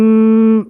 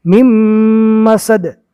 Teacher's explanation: یہ نون نہیں پڑھا جائے گا، جزم والے حرف کے بعد تشدید والا حرف آوے تو جزم والے حرف کو چھوڑ دیں گے، نہیں پڑھیں گے، یہ میم کو ڈائریکٹ میم سے ملائیں گے